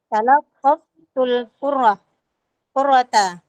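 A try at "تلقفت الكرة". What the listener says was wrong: Ya, roknya tidak tasdid.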